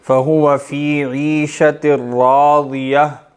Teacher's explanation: ضاد، ٹھیک ہے، ضاد جیسے ہم نے سیکھا ہے ویسے پڑھیں گے، زبان کی سائیڈ کو آپ نے ٹیڑھا کر کے اوپر کی داڑھ سے لگانا ہے اور موٹا پڑھنا ہے، دال بننے سے بچانا ہے۔